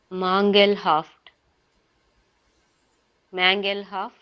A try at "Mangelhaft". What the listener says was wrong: No, not mangle. Mangelhaft.